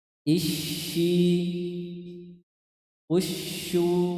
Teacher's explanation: huruf syin itu ada namanya sifatnya attafasyi itu menyebar suara yang menyebar di dalam rongga mulut